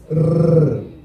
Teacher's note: É uma consoante vibrante. Ao pronunciar o som, a língua vibra, né? Nos maxilares superiores.